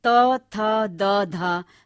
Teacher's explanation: दंते जीवा की नोक ऊपर की दंत पंक्तियों को छूती है